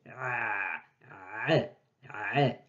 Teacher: Ça sort du fond de la gorge.